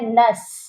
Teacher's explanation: نون مشدد ہے، اس پر پہلے غنہ کریں گے، پھر اس نون مشدد کو ہم نے سین کے ساتھ ملا کر پڑھنا ہے